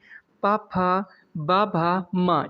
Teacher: जो आपका ये पा वर्ग है इसका उच्चारण स्थान दोस्तों ओष्ठ होता है। ये सब ओष्ठ की सहायता से बोले जाते हैं, इसलिए हमने इन्हें ओष्ठ एकदम राइट आंसर हो जाएगा।